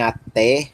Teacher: O eta é o som do nosso E aberto, como em até, como no nome Pelé, chulé, certo?